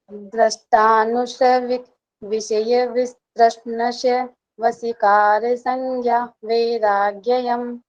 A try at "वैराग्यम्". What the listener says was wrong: वैराग्ययम नहीं, वैराग्यम, राग्यम।